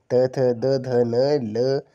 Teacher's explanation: उच्चारण स्थान होंगे वो आपके दंत होंगे